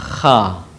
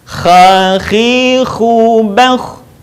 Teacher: Huruf ini dikeluarkan dari tenggorokan yang terdekat dengan rongga mulut kita. Ciri khasnya terdengar suara seperti orang yang sedang mendengkur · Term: huruf kha